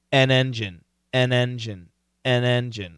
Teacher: The word an, okay, is a short A. But typically we pronounce it with a short E.